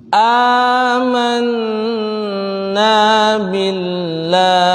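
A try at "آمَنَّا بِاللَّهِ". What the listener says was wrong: Lafzullah tidak tebal karena sebelumnya kasrah. Lafaz Allah akan tebal kalau sebelumnya itu dhammah dan fathah.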